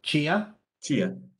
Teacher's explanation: Oh, so you make it an affricate.